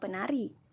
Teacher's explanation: Lanjut, lambang fonetis P kecil, bunyi hambat bilabial tak bersuara